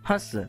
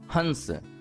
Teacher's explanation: जैसे ही आप कहते हो हंस तो आप गौर करोगे कि मुख की अपेक्षा नाक से ध्वनि अधिक निकल रही है